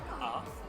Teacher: I just explained to them that my English, my accent is from Australia, so our A's, so it's like it's lengthened, it's like stretched